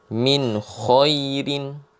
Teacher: izhar, artinya bacaannya jelas, tidak dengung